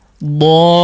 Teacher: Dhalla, silahkan diikuti. Dhalla, agak panjang la-nya ya. La-nya di situ 2 harakat boleh.